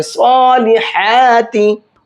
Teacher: ہا کو حلق سے نکال کر کے پڑھیں گے